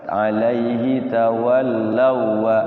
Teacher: alaihi tawallaw wa Enggak ditahan. Waw ketemu waw namanya idgham mutamatsilain, bukan idgham bigunnah ya. Jadi langsung masuk ke waw yang depannya.